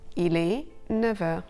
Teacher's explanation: there are a couple of cases when the F of NEUF is pronounced V